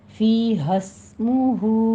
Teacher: بہت لمبا نہیں کرنا، بس الف مدہ کاؤنٹ کرنا ہے، اور ملا کے پڑھیں گے تو پھر سین پر سیٹی کی آواز آئے گی ، ہمز کرنا ہے، فی حسمہ، ہو میں مد صلہ صغریٰ